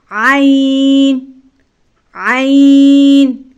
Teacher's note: عین بھی حلق کے درمیانی حصے سے ادا ہوگا جہاں سے ہا ادا ہوتا ہے۔